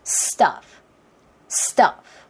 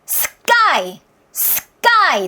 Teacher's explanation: 된소리가 나오는 이유를 알아야 돼요. 그냥 된소리가 아니라 S를 잘하려다 보니까 트에 힘이 빠져서 된소리가 나오는 거예요.